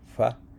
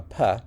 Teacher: So Originally, the word for opossum ended with a voiceless bilabial fricative, fa, and then it basically fortition happened, so the fa became a pa in the dual